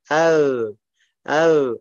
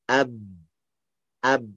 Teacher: Ab sampai nembel atas, bibir atas sama bibir bawah. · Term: huruf ba